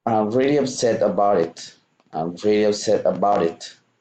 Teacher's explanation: So here you're linking the end of about and the word it. So I'm really upset about it to link the two words together.